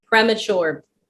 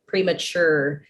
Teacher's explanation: So the stress would be on the last syllable, premature.